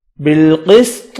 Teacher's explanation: وقف کیا، طا ساکن ہوگا، قلقلہ کریں گے۔